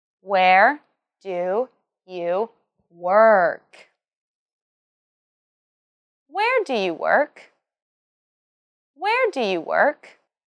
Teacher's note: this is a WH question, so it has a falling tone at the end. · Remember to emphasize where and work.